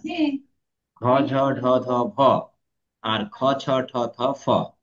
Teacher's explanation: আর বাতাসের চাপ যাদের বেশি আছে তাদের নাম নিয়েছি মহাপ্রাণ।